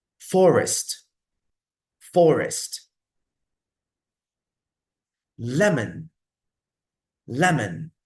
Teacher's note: I put the stress on the first syllable, so I pronounce the first syllable a bit stronger, a bit maybe sometimes louder